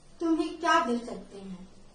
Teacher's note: इस वाक्य में क्या पे बल पड़ा है। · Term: बलाघात